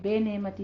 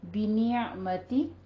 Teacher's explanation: با کی آواز کو کسرہ ہے باریک ہی رکھیں گے, بے نعمتی نہیں کہنا ہے.